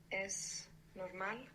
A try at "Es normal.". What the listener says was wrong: Yeah, es normal. And you pronounced an S, which is excellent.